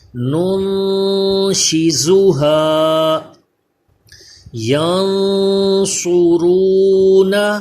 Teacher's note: نون ساکن میں غنہ کریں، صاد کو پر پڑھیں